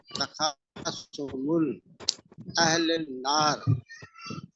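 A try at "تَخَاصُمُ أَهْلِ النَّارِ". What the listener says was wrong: तखासुमु है, मुल नहीं पढ़ेंगे। तखासुमु अहलिन नार,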